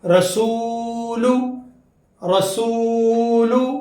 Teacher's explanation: رسول میں وہ ساکن سے پہلے پیش آ گیا تو حرف مدہ، تو یہاں پر تھوڑا کھینچیں گے